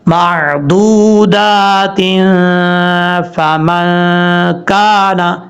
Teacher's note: یہاں پر دو زیر کی تنوین کے بعد فا آ رہا ہے تو یہاں غنہ ہوگا اخفا کا ایک الف کی مقدار